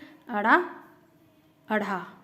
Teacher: अढ़ा और अढ़ा ये दोनों उत्क्षिप्त व्यंजन कहलाते हैं, क्योंकि इनके उच्चारण में जीभ पीछे की तरफ जाकर झटके से सामने की तरफ गिरती है